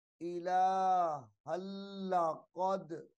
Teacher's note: الہن کی جو ہا ہے لام مشدد کے ساتھ ملا کر پڑھی جائے گی